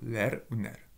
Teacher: Et du coup, le suffixe a une voyelle antérieure.